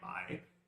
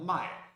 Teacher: the only difference between the verb to buy, mai, and the verb to sell, mai, is the low tone, 3rd tone, and the falling tone, the 4th tone.